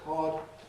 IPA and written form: kɒd (cod)